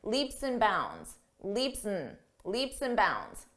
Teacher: when we have and between two words you can reduce that just to n